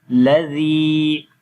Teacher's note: On the Ya you will make long sound because Ya is madda letter, Ya is coming with Sukun sign on it, and there is Kasra before.